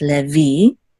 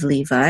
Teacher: the accent is on the last syllable, so it's levi. Okay, this is the accent mark, levi, instead of Levi in English.